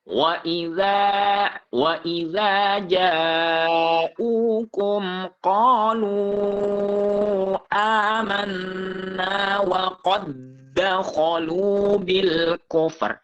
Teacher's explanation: karena diidghamkan, maka dal sukunnya tidak dipantulkan ataupun tidak menjadi qalqalah. Karena sebab diidghamkan kepada huruf dal yang kedua ini namanya idgham mislain gitu ya.